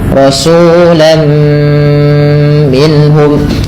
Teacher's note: Yaitu idgham diartikan dengan memasukkan apa yang dimasukkan adalah bunyi suara tanwinnya kepada huruf setelahnya. Rasulan menjadi rasulam sehingga terdengar bunyi suara huruf mim. Langkah kedua, karena ia bighunah disertai dengan gunah maka perlu ada penahanannya. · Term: idgham bi gunnah